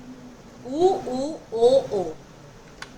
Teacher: जब इन स्वरों का उच्चारण किया जाता है तो होठ आगे की ओर गोल हो जाते हैं। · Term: वृत्ताकार स्वर